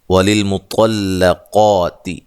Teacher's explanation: یہاں طا اور قاف کو موٹا ادا کرنا ہے ، لام کو تا کو باریک پڑھنا ہے، ٹھیک ہے، اور